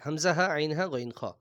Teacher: এই হুরুফগুলো গলা বা কণ্ঠনালী থেকে উচ্চারিত হয় বলে এগুলোকে হুরুফে হালকি বলা হয়